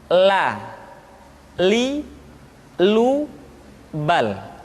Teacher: Selanjutnya huruf la diucapkan dengan mengangkat ujung lidah kita, dengan disentuhkan dengan langit-langit.